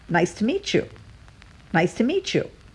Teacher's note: The meat flows into the word you, and then it sounds like chew.